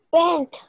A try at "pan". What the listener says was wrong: Pan. No, no hay T, no es pant. Es pan.